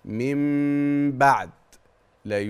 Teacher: الامر الثالث حتى يتحقق الاقلاب ان حضرتك تغن مع الاخفاء اسمها كده الغنه مع الاخفاء طيب ثلاث امور دي كلام نظري